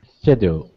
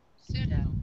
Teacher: in English we really don't pronounce that oddball P that comes before an S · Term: the P is silent